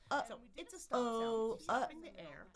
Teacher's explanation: I'm stopping the air. Where am I stopping it? Not on the ridge, but in the back in the glottis. You'll feel it kind of tighten up. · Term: stop sound